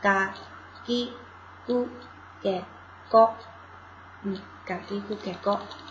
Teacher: 咔行，咔行的浊音呢是变成▁g，▁嘎行 ，我写一下啊，变成▁g▁加什么？既加什么的话，就是变成嘎了，嘎。写法呢，就是在原来的那个上面加两个点儿，比如说卡基库凯科是这样写哈，卡基库凯科的话，那分别加俩点是嘎基库凯。哦，这是嘎行第一行的浊音啊，嘎叽咕给高，嗯，嘎叽咕给高。那咱看第二行，萨西斯塞搜的▁s▁变成▁z，▁就变成▁za，▁zara▁的▁za▁啊。然后▁za▁的话是这样写的，是分别加俩点儿。扎鸡之在做，扎鸡之在做，只是加了两个点而已。然后那他行呢，他行变成▁did，▁那就是他完了以后是点变成▁da，▁他妻子得多变成▁da▁妻子得多。哒叽滋得哆，中间这两